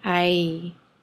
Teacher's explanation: Eye, which is a one syllable word, is nothing but a diphthong.